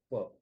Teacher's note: as pa is placed on the lips, the tongue slightly extends itself towards the teeth.